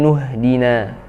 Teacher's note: atau Hamzah yang dibaca ketika kita memulai bacaan dari sana ya Adapun ketika kita menyambungkan bacaan dari ayat sebelumnya maka hamzahnya tidak dibaca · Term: Hamzah washal